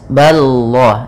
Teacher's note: Kemudian pada lafal Allah, lamnya tebal. Ini lafal lam tafkhim, yaitu ba-nya tipis